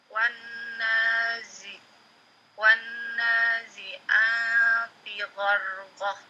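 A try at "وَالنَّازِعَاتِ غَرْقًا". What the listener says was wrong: Ya, tab nunnya ditahan lagi gunnahnya. Wan nazi'ati gharqa. Nah, ketika berhenti di fathahtain ya, dimanapun tempatnya ya, berhenti di fathahtain kecuali tak marbutah. Ini panjang 2 harokat. Jadi gharqa gitu ya. Ini panjang.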